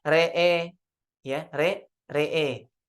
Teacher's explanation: Dimalahkan ra dan hamzahnya ya, dibaca jadi re'e